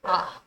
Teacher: जिन स्वरों के उच्चारण में मुख बहुत खुला होता है उन्हें विपरीत स्वर कहते हैं।